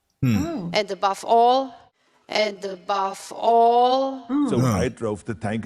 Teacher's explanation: They are devoiced. You can hear the voiced VV sound in drove, five, move, and above turn into a voiceless F sound.